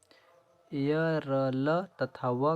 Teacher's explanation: उच्चारण में जीभ तालू दांत और होठों का स्पर्श तो होता है लेकिन कहीं भी पूरा स्पर्श नहीं होता है अतः इन्हें अंतस्थ व्यंजन कहते हैं अंतस्थ व्यंजन की कुल संख्या